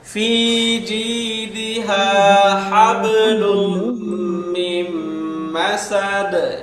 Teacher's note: গুণনা সহ ঈদগাম করে পড়তে হয় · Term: ঈদগামের গুণনা